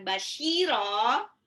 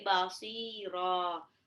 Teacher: Jadi bukan basyira tapi basira. Shotnya itu lebih mirip dengan makrosnya sin ya, bukan shin.